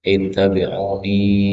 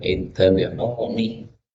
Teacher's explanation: nun boleh dipanjangkan ittabi'uni, boleh juga pendek